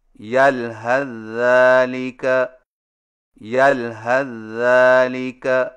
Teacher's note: number 8، یلحظ ذالک کو ملا کر پڑھنے کی صورت میں سا کو ذال میں داخل کر کے ایک مشدد ذال سے پڑھیں